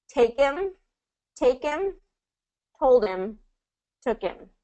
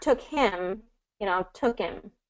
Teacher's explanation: There is a little bit of a dropped H sound there in this connected linking situation. Again, this is kind of that exception, and this is a common reduction for native speakers.